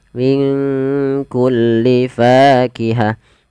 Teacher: samarkan nunnya kepada huruf kaf, minku langsung kepada makhraj huruf kaf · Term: ikhfa